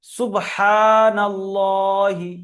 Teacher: হার উপরে টান দিতে হবে এক আলিফ